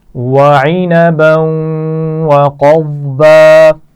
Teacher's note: وعنبا، عین کے مخرج کا خیال رکھیے، اور عنبا یہاں پر جب ملا کر پڑھیں گے تو غنہ بھی کیا جائے گا. قضبا، قاف اور ضاد موٹے پڑے جائیں گے، اور آخر میں با پر دو زبر تنوین ہے تو ہم اس کو وقف کرتے ہوئے الف مدہ سے بدل کر پڑھیں گے.